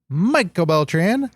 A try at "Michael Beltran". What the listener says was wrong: it sounded like you said Mickle Bell. Like rhymes with a nickel. Mickle Bell. Mickle Bell.